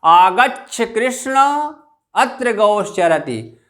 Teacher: आगे आप जब उदाहरण पढ़ेंगे तो महर्षि पाणिनि ने एक उदाहरण दिया है प्लुत का, आगच्छ कृष्ण अत्र गौश्चरति। तो यहाँ पर कृष्ण में जो हम बल लगा रहे हैं उससे पता चलता है कि कृष्ण पद जो है प्लुत है।